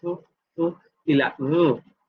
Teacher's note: Labiodentales, cuando el labio inferior toca los dientes superiores, como en el ejemplo de la f, y la v, labiodental fricativo sordo y sonoro.